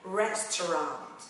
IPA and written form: ˈres.tə.rɑːnt (restaurant)